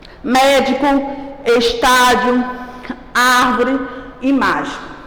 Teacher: é uma palavra que entoa com maior intensidade a sua antepenúltima sílaba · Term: proparoxítona